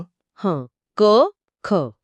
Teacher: जीभ कुठे लागत नाहीये पण आवाज अगदी आतून येतोय